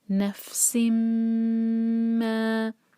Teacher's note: تو میم کو ہولڈ کریں گے 2 سیکنڈز اور پھر ما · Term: ادغام غنہ